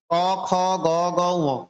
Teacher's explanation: ক বর্গীয় বর্ণকে কণ্ঠ বর্ণ বলা হয়।